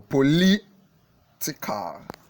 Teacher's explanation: The stress for political is in the second syllable.